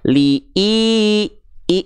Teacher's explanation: itu Hamzah ketemu Ya Sukun jadinya dua harakat namanya mad badal